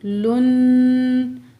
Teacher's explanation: नून साकिन के बाद ज़ुआ हरुफ़ इख्फ़ा में से आ रहा है, नून की आवाज़ को नाक में छुपा के पढ़ेंगे। इख्फ़ा को बोलते हैं छुपाने को, ठीक है।